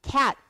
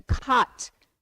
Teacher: I can turn cat into cot by changing the a to an ah.